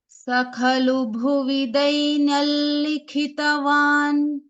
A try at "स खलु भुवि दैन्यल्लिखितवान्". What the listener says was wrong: What in the effort to pronounce the lakara, sanunasika lakara, you are leaving out the yakara itself. So on the yakara you should not leave. Dainyal, the first ya should come.